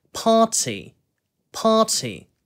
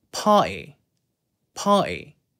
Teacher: 아까 우리가 발음을 배울 때 party, party 이런 식으로 T 소리를 살린다고 발음을 했는데요. 코크니 같은 경우에는 어떻게 되냐면은 party, party 이런 식으로 T가 그냥 쏙 없어져 버려요. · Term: glottal stop